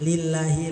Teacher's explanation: Lillahi lafaz jalalah dibaca tarkik karena didahului kasrah